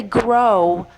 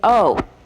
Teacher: when you say grow, your mouth ends up in a rounding position that is like a W